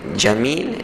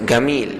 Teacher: di Mesir orang dia sebut jim dengan ga. Kita panggil jamil, dia gamil, dia akan sebut gamil.